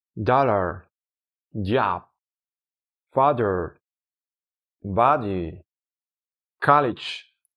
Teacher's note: Este sonido nos lo encontraremos en la pronunciación de palabras como dollar, job, father, body, college, etcétera. ¿Ves cómo se reproduce como una a más larga y relajada que la A del símbolo car? aunque no tiene siempre la misma duración exacta debido a que depende del contexto fonético y del ritmo del habla. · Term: script A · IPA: /ɑ/